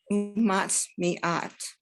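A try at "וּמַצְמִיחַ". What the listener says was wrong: Mat, me, ach. chet. It's a chet, right? It doesn't have a little tail on it. It's a chet.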